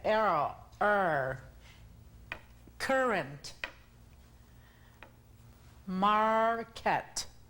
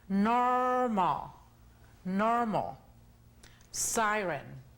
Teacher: enrollan la R o ponen la punta de la lengua en la parte dura del cielo de la boca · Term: sonido R